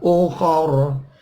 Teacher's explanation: ukhor ro-nya waqaf jadi disukunkan